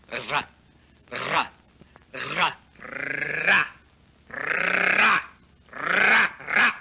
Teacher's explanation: en portant le bout de la langue jusqu'au haut du palais, de sorte qu'étant frôlée par l'air qui sort avec force, elle lui cède et revient toujours au même endroit, faisant une manière de tremblement.